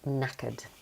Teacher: The K at the beginning is silent. So we start with the N.